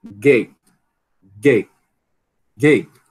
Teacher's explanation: Gate, pode acontecer em posição final também, né? Gate, gate, gate, você prende aqui, você não realiza o T, não é igual com cat, né?